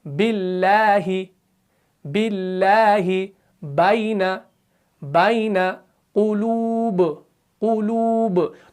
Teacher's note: तो बा को पढ़ते वक्त क्या हो रहा है कि होंठ मिल रहे हैं, जुबान का बीच वाला हिस्सा ऊपर तालु से नहीं मिल रहा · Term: मुनफ़तिहा